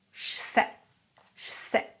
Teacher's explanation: Numéro 1, le E de je disparaît. Mais comme le S est sourd, le J, par un phénomène d'assimilation, c'est de la linguistique, devient ch